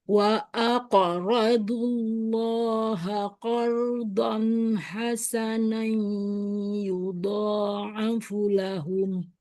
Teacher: Ro dibaca tebel karena berharakat berfathah.